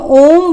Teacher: जब हम ओम बोलते हैं तो बहुत देर तक हमारे मुख से ध्वनि निकलती रहती है। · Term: विलुप्त स्वर